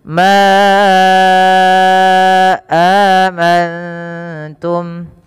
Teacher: panjangkan lafal ma sepanjang 4 atau 5 harakat karena ia ada mad jaiz munfasil